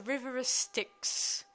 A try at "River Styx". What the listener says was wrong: Not the River of Styx, the River Styx. No, you said River Styx, not of Styx. It's River Styx.